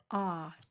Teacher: If you don't, it will turn into a schwa sound. If you don't drop your jaw on the A, it will sound like uh and that's a very different sound.